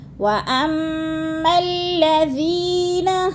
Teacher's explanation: پھر میم کو لام کے ساتھ ملا کے پڑھنا ہے، اور ذی اس کو بھی کھینچنا ہے، تھوڑا سا یا مدہ ہے